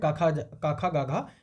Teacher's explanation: ये क वर्ग का उच्चारण स्थान क्या होता है कंठ